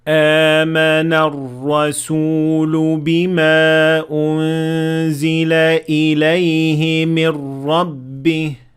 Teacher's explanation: تو ایک حمزہ اور پھر اس کے بعد 2 حرکات کی ایک مد طبیعی